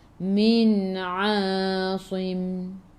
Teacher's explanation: Min daripada kerongkong, bukan daripada hidung. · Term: izhar halqi